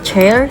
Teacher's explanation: Africatif dimulai menjadi stop seperti stop kemudian dilepas seperti frikatif.